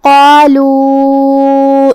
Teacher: ہم قاف کو اور مد الف کو دونوں کو بھاری آواز میں پڑھیں گے۔ آخری میں یہاں مد جائز منفصل ہے تو ہم اپنی آواز 2 سے 4 مد کے برابر لمبی کریں گے۔ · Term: تفخیم